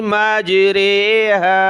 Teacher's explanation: یعنی یہ امالہ والی رے ہے، اس میں کیا، اس کو مجہول پڑھنا ہے. ہر جگہ ہم کہتے ہیں را کھڑی زیر ری، یہ معروف ہوتا ہے، اس کو ہم نے مجہول کر کے پڑھنا ہے